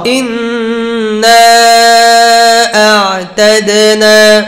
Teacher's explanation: আইন জাহার তাওয়াসসুত, শক্ত করা যাবে না, তাওয়াসসুত হবে, আওয়াজ অল্প চালু থাকবে।